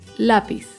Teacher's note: Lápiz es una palabra grave porque se acentúa en la penúltima sílaba.